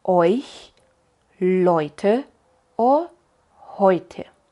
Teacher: Y la EU de hecho se pronuncia con OI, oi, oi, como en euch, Leute o heute.